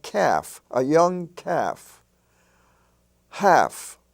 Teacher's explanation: In the LF family, with such words as self and golf, you have calf and half. They're spelled with LF, but the L is not pronounced.